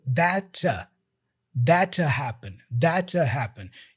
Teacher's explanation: So the T for that drops. He only pronounces the T for two.